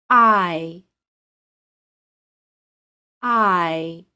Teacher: begin with your tongue in the middle of your mouth not too low not too high then the tongue moves up so that the center of the tongue is very close to the roof of your mouth in the same position as the long e listen to the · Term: long i